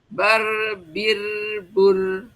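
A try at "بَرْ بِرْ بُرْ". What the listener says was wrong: Itu mah sama, Bu. Sama ujungnya. Yang tebal sama yang tipis. Baru. Jadi buru. Si mulutnya itu bulat, tidak senyum.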